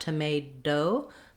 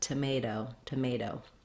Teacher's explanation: My tongue goes up to the T position, but I just lightly tap up there and come back down. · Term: flap T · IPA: ɾ